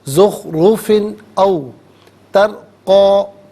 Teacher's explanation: فا کے نیچے دو زیر کی تنوین ہے، اس کے بعد حرف علقی حمزہ آ رہا ہے، تو یہاں ناظرین تنوین پر اظہار کیا جائے گا، اخفاء یا غنہ نہیں کریں گے · را ساکن ما قبل تا پر زبر، را ساکن کو پر کر کے پڑھا جائے گا